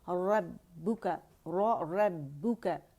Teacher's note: रॉ तफ़ख़ीम के साथ पढ़ी जाएगी। बा जो है मुशद्दद है, इसमें आएगा पॉज क्योंकि इसमें शिद्दा है